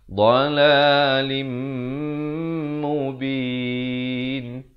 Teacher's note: Idgham bi gunnah. Bacanya dengung dua harakat.